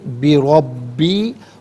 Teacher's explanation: را پر زبر ہے، را کو پر کر کے پڑھیں گے. اور با مشدد ہے، اسے جماؤں کے ساتھ پڑھا جائے گا.